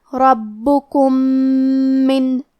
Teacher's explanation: ہم پہلے میم کو دوسرے میم میں ملا کے ایک ہی میم اور تشدید کے ساتھ پڑھیں گے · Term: ادغام